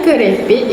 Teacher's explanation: Konsonan K pada akhir kata kerepek bertukar menjadi hentian glotis.